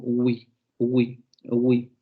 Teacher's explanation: Aproximante labiovelar sonora, exactamente. También la tenemos, recuerden, en español, en palabras como huevo